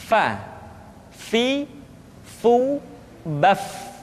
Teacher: Minal Mugni magon gonho berikutnya pengucapan huruf Fa diucapkan dengan menyentuhkan ujung dua gigi seri kita bagian atas dengan bibir bawah bagian dalam